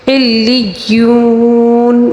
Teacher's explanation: ما علیون یہاں پر پھر تشدید ہے، اچھی طرح اس کی ادائیگی کر لیا کریں. علیون واو مدہ ہے، اس کو 3 الف کے برابر کھینچ کر پڑھیں گے